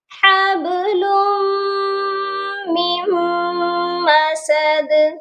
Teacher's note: میم کو میم کے ساتھ جوائنٹ کر دینا ہے، نون ساکن کو نہیں پڑھنا. جب بھی ساکن اور مشدد حرف اکٹھے آتے ہیں ہم ساکن کو چھوڑ دیتے ہیں، اسی لیے ہم نے میم مشدد کو دوسری میم مشدد کے ساتھ ملا دینا ہے.